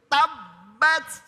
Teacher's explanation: ini bukan nabroh, tapi ada sifat kolkolahnya. Sifat berarti ada mantulnya dikit.